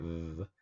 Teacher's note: if you take V and you feel your vocal cord when you say it, v, it vibrates. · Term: voiced